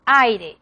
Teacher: Começa por vogal aberta e termina em fechada. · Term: decrescente